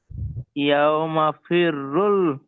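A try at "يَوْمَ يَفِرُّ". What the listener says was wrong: ইয়াউমা পরে ইয়া আছে না, এই যে আপনি দেখতেছেন না, আরে এই যে এটা কি ইয়া ইয়া ইয়াটা বলতেছেন না, বলেন ইয়াউমা ইয়া, বলেন ইয়া ফিরুল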